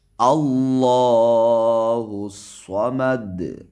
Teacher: اللہ کے یہاں لام کو بھی موٹا پڑھیں، اس لیے کہ اللہ کے لام سے پہلے یہاں حمزہ پا زبر ہے